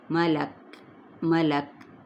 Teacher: ملک کاف پہ ہم نے جب وقف کیا وقف بالاسکان اور کاف پہ ہمس ہوگا